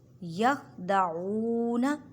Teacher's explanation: آمنو وما میم کو ایک الف کی مقدار میں کھینچ کر پڑھیں کیونکہ الف سے پہلے زبر ہے۔ یخدعون عین کو حلق کے درمیان والے حصے سے ادا کریں اور واو عین کو ایک الف کی مقدار میں کھینچ کر پڑھیں۔